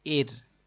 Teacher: اس را ساکن سے پہلے زیر ہے، اس کو باریک پڑھیں گے